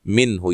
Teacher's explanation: یہاں نون ساکن کا اظہار ہے، غنہ نہیں کریں گے